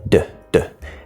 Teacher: the D sound does not touch the teeth. It's up here.